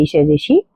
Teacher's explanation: मूर्धा से निकलने वाली यानी कि मुंह से निकलने वाली ध्वनि है आपकी ऋष ऋषि